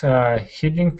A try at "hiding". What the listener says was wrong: So this word is actually hiding instead of heating. Hiding.